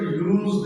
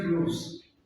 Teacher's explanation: When it is a verb, you have to pronounce as za sound, and when it is noun, you have to pronounce as sa.